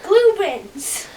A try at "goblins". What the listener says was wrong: Now you're saying glue.